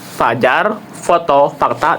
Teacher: Pastikan ya giginya. Nah, udara keluar melalui celah-celah sempit bagi gigi dan juga bibir ya. Nah, terjadi gesekan.